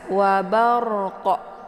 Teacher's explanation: itu yang berharakat fathah sebelumnya maka itu dinamakan dengan hukum bacaan ro tafkhim ya tebal jadi ujung lidahnya terangkat ke atas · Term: ra tafkhim